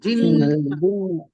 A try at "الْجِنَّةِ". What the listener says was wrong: জি হবে না, জি হবে না, জিন্নাতি। হ্যাঁ ওই, হ্যাঁ বর্গার জ।